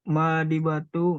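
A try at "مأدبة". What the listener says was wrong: Ma'dabatun, bukan ma'di. Ma'dabah, fathah dalnya.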